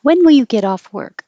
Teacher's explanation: the only thing changing is the T changing to a D, and that connects get off.